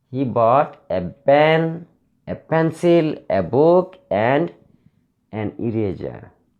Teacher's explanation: before the conjunction I have used 3 nouns. All the nouns are for rising intonations.